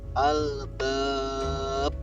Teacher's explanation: ada huruf ba yang berada di akhir atau penghujung kalimat, sehingga cara membacanya memantul. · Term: qalqalah kubro